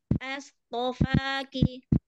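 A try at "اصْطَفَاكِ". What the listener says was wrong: Nah, hati-hati as atau itu. As atau is. Is ya. Kalau a nanti ada lam.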